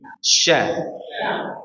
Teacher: dari mana huruf ini keluar dari tengah lidah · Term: huruf syin